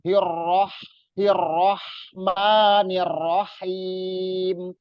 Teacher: ro-nya double. Jadi double, jadi harus ditekan, tapi nggak boleh dilama-lamain.